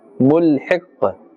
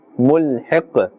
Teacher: This qaf, we are giving it a temporary sakin or jazm, and therefore we are pronouncing it with the qalqala, the slight bouncing or echoing sound. Mulhiq, not too much.